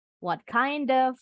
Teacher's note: What kind of disambung ya d-nya dengan bunyi of. What kind of tapi kalau cepet off-nya jadi e.